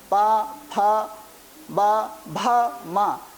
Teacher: तो इस प्रकार से पा, फा, बा, भा, मा, इन वर्णों का उच्चारण ओष्ठ के माध्यम से होता है, इसलिए यह ओष्ठ वर्ण कहलाते हैं।